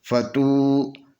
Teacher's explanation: فا زبر فا، تا پیشوا تو، یہ واو سے پہلے پیش ہے، یہ واو مدیہ ہے، اس کو 2 حرکت کے برابر کھینچ کر پڑھیں گے